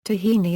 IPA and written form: tɑːˈhiːni (Tahini)